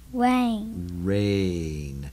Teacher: we've got the A sound, in a long form, the long sound of A, rain, but no real I sound, right?